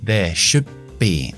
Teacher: Paro, cierro, paro y exploto la B. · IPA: /ðeə ʃʊbbi/